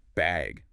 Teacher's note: just bag with a rising tone